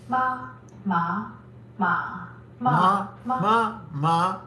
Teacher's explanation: The tones are number one, a high flat tone, two a rising tone, three a falling rising tone, four a falling tone, and five the neutral tone. Meaning that syllable is not distinguished by tone at all.